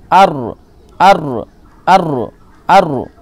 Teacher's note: জীভের আগার উল্টো পিঠ এবং তার বরাবর উপরের তালুর সাথে লাগিয়ে উচ্চারিত হয় ওকে মানে আপনার যে জিভের একেবারে আগা এটার সামান্য একটু পেছনে